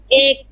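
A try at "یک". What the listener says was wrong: ইয়েক, ইয়েক, ঠিক আছে? আমরা বাংলায় বলি এক, ফার্সিতে হচ্ছে ইয়েক।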